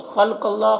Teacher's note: خا اور قاف دونوں کو پر پڑھنا ہے، حروف مستعلیہ میں سے